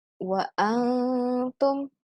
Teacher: Ikhfa ya, atau kita baca samar. Itu antara jelas dan tidak.